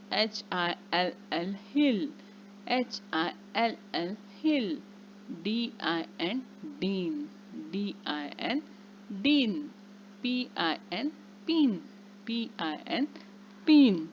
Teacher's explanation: या सहाही शब्दांमध्ये आय या स्वराचा उच्चार जो आहे तो ऱ्हस्व ई सारखा उच्चार झालेला आहे. एच च्या समोर आय लागल्यामुळे ही, हिल अशा प्रकारचा शब्द तयार झालेला आहे.